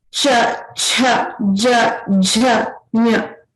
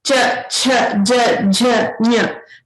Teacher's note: So all of these letters, these 5 letters which we are looking at this next group are all Talavya. Talavya means we are pronouncing from the talu or the palate of the mouth, so the top part.